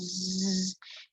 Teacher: If you put your finger on your Adam's apple, technically the larynx, and produce a very long zzz, you should feel vibration. This shows that zzz is a voice sound. For voice sounds, the vocal folds are drawn together.